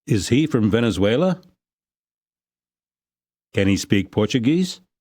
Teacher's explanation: Questions of this kind are usually said with a rising intonation. They end on a high pitch. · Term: yes no question